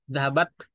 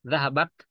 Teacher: Zahabat, nah semacam kita kayak meludah sedikit gitu. Zahabat, ada T yang keluar, ada udara yang terpercik sedikit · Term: sifat al-hamas